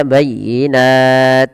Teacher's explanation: huruf 't' menjadi tidak terdengar